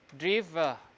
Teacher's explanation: The E at the end is just the unstressed schwa